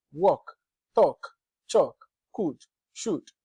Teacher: after the short o in could and should the L is not being realized at all